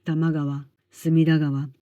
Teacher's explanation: Este fenómeno se llama rendac, un cambio fonético propio del japonés en el que al combinarse varias palabras, el sonido inicial de la segunda se vuelve sonoro · Por cierto, la palabra japonesa kawa, que significa río, se pronuncia así cuando está sola, pero cuando aparece al final de un nombre propio cambia a Gaba con sonido sonoro, como en tamagava, sigava.